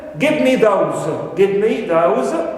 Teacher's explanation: those also contains this extra stress that's why it is considered as the tonic syllable of this tone unit